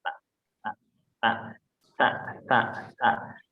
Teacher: Ta di sini itu sama tadi ya, di berdekatan makhrajnya. Makhrajnya itu ada di gigi seri atas.